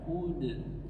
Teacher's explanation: salah satu dari sifat huruf dal adalah istifal, tipis, pangkal lidah, tidak naik ke langit-langit belakang. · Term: qalqalah